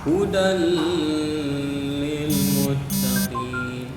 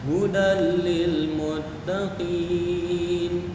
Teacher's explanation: Nah, di sini anak-anakku semuanya huruf itu cuma dua saja, lam sama ro. Ketika nun sukun ini bertemu sama lam sama ro, maka kita tidak boleh membaca dengung.